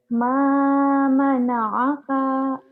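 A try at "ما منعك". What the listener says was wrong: Ma mana'aka pendek ya. Ma mana'aka ujungnya pendek.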